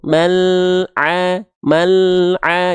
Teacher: Enggak boleh putus suaranya kalau putus nama sifatnya Harusnya bukan tawasud tapi syiddah sedangkan lam enggak punya sifat syiddah lam itu tawasud makanya al-nya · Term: lam sukun